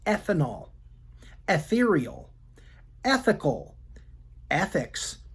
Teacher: sometimes the letters eth together sound like the short e followed by a soft th sound as in the words ethanol ethereal ethical ethics also methane method